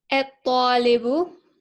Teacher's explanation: And so I skipped the lam entirely. Okay, so it's almost as if the ta, by virtue of having a shadda over, eats up the lam before it. Yeah, the lam is swallowed up. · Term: sun letter